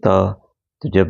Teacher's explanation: त जीभ हमारी छू रही है दांत को